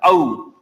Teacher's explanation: औ का उच्चारण आउ किया जाता है, औ। औरत, पैसा, इस तरह से उच्चारण किया जाता है।